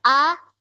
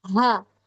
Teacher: Memang hamzah ada sedikit percikan nafas tapi kalau ha kalau bunyi ha ha itu ada kayak ketiyup gitu ya